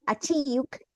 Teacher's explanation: between the I and the U, imagine that there's the letter Y because it's a diphthong